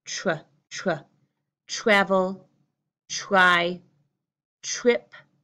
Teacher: man interesting you hear that TR it makes this strange change in many parts of American English where TR you actually hear the sound of CHR